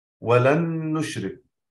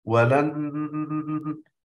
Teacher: أضغمنا النون الأولى في النون الثانية وأتينا بغنة مع ذلك، ولن، لاحظوا ولن، هذا الصوت اللي أنا الآن عندما ضغطت على الأنف، ضغطت ورفعت اليد ثم ضغطت عدة مرات ورفعت وكنت أرفع، أصبح الصوت يتقلب. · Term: إدغام مع الغنة